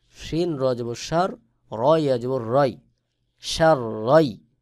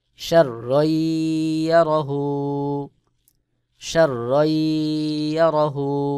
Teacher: পরের হরফে যখন তাসদিদ চলে আসলো এই কারণে এখানে দুই জবরের থেকে এক জবর উচ্চারণ করে পরের হরফকে ধরবে